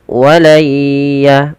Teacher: Kita langsung masukkan suara nunnya kepada huruf ya. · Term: idgham bi gunnah